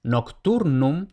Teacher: tenemos tur, la penúltima sílaba, y vemos que termina en consonante. Por tanto, tur va acentuada.